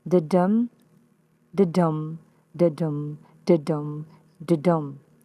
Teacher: The repeating unit here is one unstressed syllable and one stressed syllable. This type of metrical foot is called an iamb, and there are five of them here.